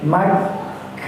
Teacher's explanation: Kafnya kita tahan terlebih dahulu karena kafnya bertasdid. Hukum awal tasdid ialah memasukkan atau memasukkan hurufnya sebelum dibaca kita tahan sebanyak 2 harokat ya.